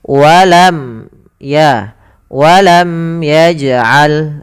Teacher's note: maka hukum bacaannya itu izhar syafawi suara mimnya harus jelas